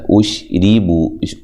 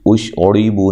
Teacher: وَأُشْرِبُوا فِي قُلُوبِهِمُ الْعِجْلَ بِكُفْرِهِمْ، واو کو اونٹوں کو گول کرتے ہوئے حمزہ کو تحقیق سے ادا کرنا ہے، شین کو ہلانا نہیں ہے، را کو باریک پڑھنا ہے، را کے نیچے زیر ہو تو را کو باریک پڑھا جاتا ہے، اش ری بو، اش اوڑی بو نہیں کرنا، ٹھیک ہے۔